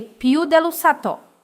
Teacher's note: In the second phrase, we say più dell'usato. We place an accent on the U.